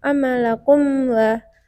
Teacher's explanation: huruf mim sukun bertemu huruf Waw dibaca jelas tidak bertemu sama sekali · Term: izhar syafawi